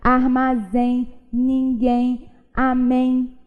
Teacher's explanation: É como se a gente pronunciasse um izinho a mais depois do E. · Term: nasais decrescentes